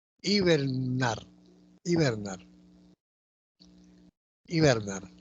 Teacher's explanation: en hibernar, la tónica es nar. Aguda.